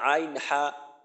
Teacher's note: দুই নাম্বার মাখরাজ আরেকটু উপরে উঠলো হলকের মধ্যখান থেকে